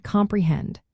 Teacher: two unstressed syllables followed by one stressed syllable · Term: anapestic meter